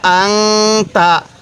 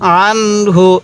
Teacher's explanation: তো এই নুন সাকিনের পরে তা হলো ইকফার হরফ তাই আমি এই নুন সাকিনের মধ্যে গুনাহ করছি আর এই নুন সাকিনের পরে হাটি হলো ইজহারে হরফ তাই এই নুন সাকিনটি আমি স্পষ্ট করে পড়ছি